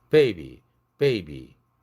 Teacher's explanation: 앞에 것이 확실히 경음에 가깝게, 즉 무성음에 가깝게 들리려고 하죠. 그래서 파열이 조금 세진 거죠. B 할 때는 파열이 약해졌고요. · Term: strongly exploded